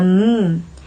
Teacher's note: the lips close and that's where the Airstream is being stopped but the air actually leaves cell cavity and that's what gives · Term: nasal